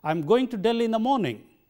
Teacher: that sounds like English because I stressed only the content words Delhi and morning and the other words I weakened tied up with the other syllables and that is how characteristic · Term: characteristic English rhythm